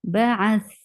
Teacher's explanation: You will give sukoon on the last letter, and tha is among letters which will get rakhawa, and rakhawa is flow of sound. Like it should have a nice flow of sound.